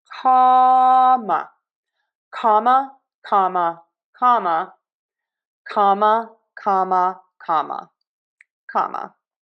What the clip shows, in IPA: ˈkɑ.mə